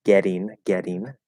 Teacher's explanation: we still have that sort of that flap d it's a little bit harder on the flap d because it's a little more enunciated but it's still flappy